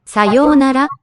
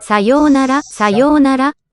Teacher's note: Yo plus u gives a long yo sound. So a rewrite happens there.